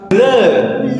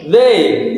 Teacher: the tongue is placed lightly between the teeth. The airflow continues smoothly and the vocal cord vibrates